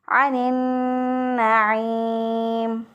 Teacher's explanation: इसी तरह बाज़ लोग गुन्ना नहीं यहाँ पर नहीं करते और आइन को उसी तरह हमज़ा से बदल के पढ़ देते हैं तो फिर भी गलत हो जाएगा, यानी अनिन नाइम पढ़ देते हैं अनिन नाइम तो गलत हो जाएगा। आइन का मखरज जो है वो क्या है, वस्ते हलक, हलक के दरमियान से आइन अदा होता है तो दुरुस्त अदायगी है अनिन नाइम।